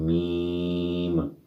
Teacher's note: ہونٹوں سے ادا کریں گے دونوں ہونٹ جوڑ کے